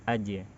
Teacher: Karena jimnya huruf tipis, maka bunyi pantulannya atau qalqalahnya juga tipis.